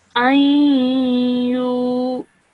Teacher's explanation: when you're joining the alif to the ya mushaddad, you have to produce a 2-second nasal sound in the middle